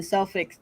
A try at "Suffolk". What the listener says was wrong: Suffolk. The L is silent. I think the L is silent.